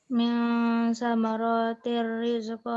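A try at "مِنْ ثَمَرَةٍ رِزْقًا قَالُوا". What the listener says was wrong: Samaratir rizqa, ro-nya pendek. Ayo, guna rizqan qalu. Ro-nya pendek. Ro-nya nggak boleh kepanjangan.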